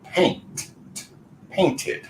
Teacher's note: we don't want to repeat the T or the D sounds so in this case we go with ID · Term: ID pronunciation